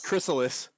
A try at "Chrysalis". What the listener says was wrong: You just said it like it was somebody's name, like Chris Alice, lead singer of Alice in Chains. Oh God, Chris Alice.